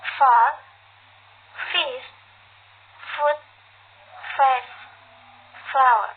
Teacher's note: To make it the sound, place the top teeth firmly on the inside of the bottom lips. Release the air continuously with no voice.